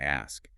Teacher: in really rapid conversation, you might drop the final S in asks and just say something closer to ask